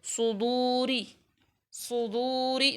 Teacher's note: वाव को हम लंबा कर रहे हैं क्योंकि वाव मद्दा है